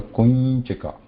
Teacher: even if you try to say anuswara, that changes into nya sound. The anunasika letter, the last letter, fifth column of that varga, cha varga.